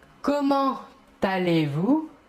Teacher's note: nous réaliserons la liaison entre comment et allez